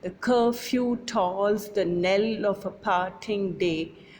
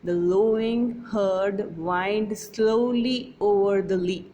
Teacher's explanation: In each pair, the first syllable is unstressed or unaccented and the second is stressed or accented, as in the 2 lines that open the poem. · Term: iambic pentameter